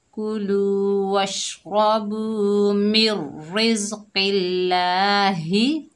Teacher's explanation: कौफ के नीचे जेर है, आगे अल्लाह का लाम है, कौफ को अल्लाह के लाम के साथ मिलाकर पढ़ेंगे, जेर की वजह से अल्लाह का लाम बारीक पढ़ा जाएगा मिर रिज। लाम के ऊपर खड़ा ज़बर है, एक अलिफ की मिकदार खींचकर पढ़ेंगे ला।